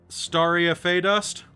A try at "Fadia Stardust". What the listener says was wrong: Close. Swap the letters around. Fadia Stardust.